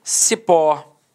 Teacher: Repare que a sílaba tônica é a última e ela é terminada em O.